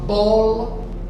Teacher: Bó é a sílaba tônica que eu ouço melhor, mais alto. · Se eu falo bola, bó é a sílaba tônica.